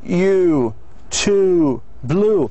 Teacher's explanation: The lips are rounded and the center and back of the tongue is raised toward the soft pallet. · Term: long vowel sound